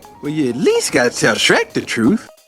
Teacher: you sounds like well, ya. The Y sound is very soft.